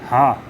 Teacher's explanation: हा जो है काकल वर्ण है